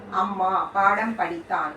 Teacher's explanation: மகர மெய்யெழுத்து தனக்குரிய அரை மாத்திரை அளவில் முழுமையாக ஒலிக்கிறது